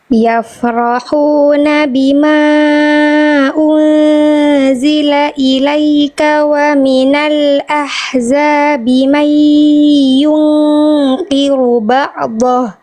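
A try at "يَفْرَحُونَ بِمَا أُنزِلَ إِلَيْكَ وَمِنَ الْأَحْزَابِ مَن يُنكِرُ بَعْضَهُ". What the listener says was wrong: di sini ada yang belum maksimal sedikit apa huruf ainnya ee tadi agak terputus dan agak mantul. Ba jangan ba'd.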